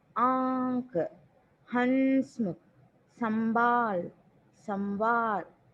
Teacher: नाक और मुख, mouth and nasal both sounds are coming, इसे अनुनासिक बोलते हैं